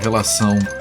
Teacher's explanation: you have to move the air through your nose for that to come out properly, otherwise you sound like you're constipated.